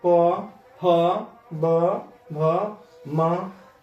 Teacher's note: ये सबको बोलने में आपका दोनों ओष्ठ सट जाते हैं, इसलिए इसको ओष्ठ्य वर्ण कहते हैं।